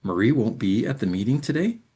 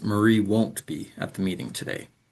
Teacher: That falling pattern confirms it's a statement, but the rising pattern changes that statement into a question.